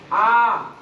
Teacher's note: मेरे हाथ में पेंसिल है, मैं आ करता हूँ, आ, और पेंसिल मुंह में से चली जाकर वापस आ गई, कहीं टच नहीं हुई पेंसिल, कहीं टच, वो अंदर का जो खाली हिस्सा है वहां से अलीफ अदा होता है